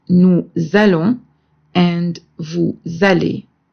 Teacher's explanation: And the sound of la liaison with the letter S is Z. So we say nous allons and vous allez.